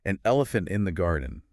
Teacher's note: All those consonants at the ends of an elephant they're going to link with those vowels that come right after them. So it's like we're blurring the lines between the words when we speak, even though when we write them, they're separate.